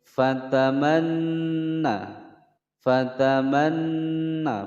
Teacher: Nun bertasydid ditekan, ditahan selama 2 ketukan, hukum bacaan gunnah musyaddadah